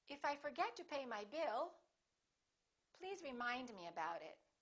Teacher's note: in that sentence we have two focus words bill and remind